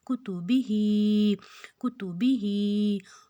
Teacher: हा को हमने दो हरकत जितना लंबा खींचना है